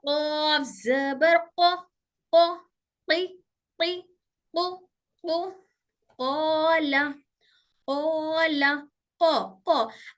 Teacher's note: और इसके बाद काफ बोल के देखिए, हमजा काफ जबर अक, अक थोड़ा से सामने होकर टच हो रही काफ की आवाज, काफ थोड़ा से सामने आ गया तो क्या हो गया, सख्त हिस्से को टच होते ही काफ हो गया